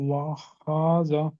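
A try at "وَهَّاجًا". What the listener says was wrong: ఇక్కడ కొంచెం దీర్ఘం లాగాలి, అలిఫ్ మద్ చేయాలి దీన్ని.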